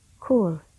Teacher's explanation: there is a constriction between the back of the tongue and the velum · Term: velar sounds